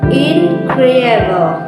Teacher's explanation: In the word incredible, for example, the primary stress falls on the second syllables